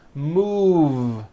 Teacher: move has that voiced V sound move so it becomes moved